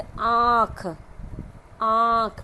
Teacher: तो मुख और नाक दोनों के साथ निकलती है। जैसे आँख, आँख मतलब नाक और मुख दोनों का प्रयोग हुआ वो हमारा अनुनासिक हुआ